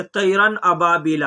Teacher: نون کی آواز کو ظاہر کر کے بلا غنہ کے جلد پڑھیں گے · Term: اظہار حلقی